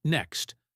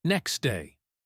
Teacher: in a phrase like next day, many native speakers drop the T.